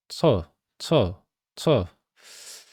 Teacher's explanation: 혀 끝을 말아서 만든 거야. 그러니까 예를 들어서 차불휘라고 할 때 차 여기에서 혀를 좀 뒤로 마는 거예요. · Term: 레트로 플렉스